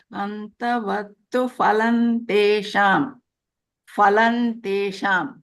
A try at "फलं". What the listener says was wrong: I still hear phalam. Phal is a Hindi word. Phal means fruit. In Sanskrit, it is not pronounced as phal. It's called phal.